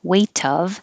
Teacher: the T will connect to the O, weight of, but then the T will change to a D because it's between A and weight of, the weight of the world.